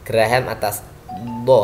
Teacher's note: Huruf dot ini keluar dari tepi lidah. Ya, jadi salah satu tepi lidah dengan geraham atas.